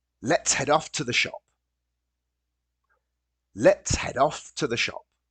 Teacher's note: And the word to becomes very short, t.